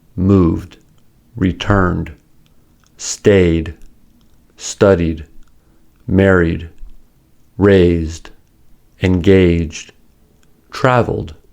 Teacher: Like the case of t, the ed is blended together with the previous consonant and is not pronounced as an extra syllable.